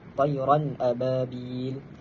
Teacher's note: bacaan dia tanpa dengung. Bacaan dia tanpa gunnah. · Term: izhar halki